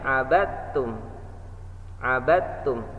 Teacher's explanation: dal sukunnya masuk ke huruf ta. Sekali lagi kita coba, wala ana abidum ma abattum. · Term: idgham